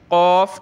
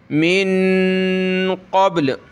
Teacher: क़ाफ को गले से निकालें मोटा करके